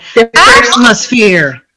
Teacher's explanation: Yeah, I'm stressing the first one. The first syllable.